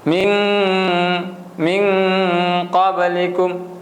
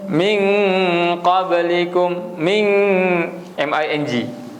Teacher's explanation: Apabila kena nun mati, dia bertemu dengan qaf, dan qaf adalah huruf ikhfa, maka bacaan dia adalah nun tu kena disembunyikan dalam qaf.